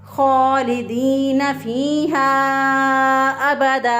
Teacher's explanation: दो ज़बर की तनवीन पर जब हम वक़फ़ करें यानी सांस और आवाज़ को तोड़ें तो उसको एक अलिफ के बराबर लंबा करके पढ़ेंगे। तो हम इसको पढ़ेंगे खालिदीन फीहा अबदा रज़ियल्लाहु अन्हुम।